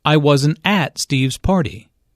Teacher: notice that the emphasis here is on at although preposition normally have weak stress